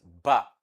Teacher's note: So when you say B, two lips are touching each other. · the lower lip goes to touch the upper lip for you to be able to produce ba